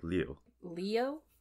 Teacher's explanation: know for editing all this together but it's almost lou but there's a little i sound in the middle and it becomes one syllable